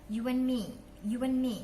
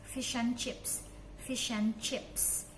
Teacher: Yang kedua adalah menghilangkan suara D